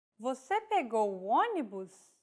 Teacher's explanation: a question mark at the end in a raised intonation